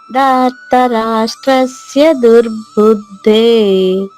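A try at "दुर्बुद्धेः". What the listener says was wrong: దుర్బుద్ధే, ఇక్కడ కూడా విసర్గ ఉంది కదమ్మా. దుర్బుద్ధే.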